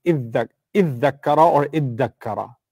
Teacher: And what happens is there's a fusion. It's called idgham in Arabic. So tadakara becomes iddakara or iddakara.